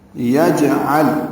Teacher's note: عین وسط حلق سے ادا ہوا، لام ساکن پہ اظہار ہے.